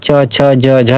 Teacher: च छ ज झ, ये सभी तालु से उच्चारण स्थान होते हैं